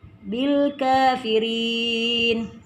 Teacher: Ri dibaca tipis karena bertanda kasrah.